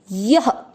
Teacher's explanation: य में अ की मात्रा है तो विसर्ग को पढ़ेंगे ह